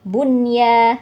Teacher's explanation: nun sukun dan ya-nya jadi bergandengan di satu kata jadi cara bacanya jelas Bunya gitu ya tanpa dengung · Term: Idhar mutlak